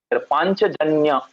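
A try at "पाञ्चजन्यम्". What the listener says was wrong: Panchajanyam. yeah, anuswara over the ya. Panchajanyam.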